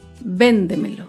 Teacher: Véndemelo se acentúa en la sílaba anterior a la antepenúltima sílaba. Véndemelo. Todas las palabras sobreesdrújulas llevan tilde.